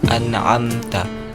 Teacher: Bagian yang pertama, pangkal tenggorokan atau aqsal halaq.